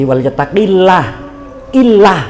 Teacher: Nah itu dibaca tarkik nggih tipis karena ciri-cirinya sebelum lafzul jalalah huruf apapun sebelum lafaz jalalah Allah berharokat kasroh, khusus kasroh. Kalau sebelum lafzul jalalah harokatnya kasroh, maka lafaz jalalahnya dibaca tipis atau tarkik. Jadi walyattaqillah, illah gitu, lah bukan loh itu kan tebel tafkhim.